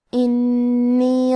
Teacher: نون پہ تشدید ہے، لہذا ہمیں تشدید کو ظاہر کرنا ہے اور 2 حرف کے برابر حرف النون کو پڑھیں گے